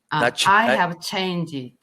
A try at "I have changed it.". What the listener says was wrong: No, there's no GD. No GD on there. There, real soft on the ED. Leave the ED off.